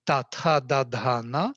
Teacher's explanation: and then with the tongue I touch the teeth